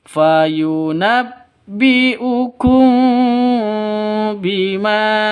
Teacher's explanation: Mim mati bertemu dengan ba. Jadi cara bacanya samar dengung 2 ketukan. · Ma panjang 2 ketukan karena ada alif diawali dengan fathah. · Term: ikhfa safawi